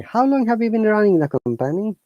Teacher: remember our tone must be going up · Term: higher intonation